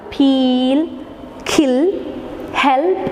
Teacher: But in the case of producing dark ill, we can see the ill is velarized. The back of the tongue, it is raised towards the soft palate or velar.